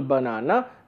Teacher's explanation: the second has to be stressed, first does not have to be stressed, third does not have to be stressed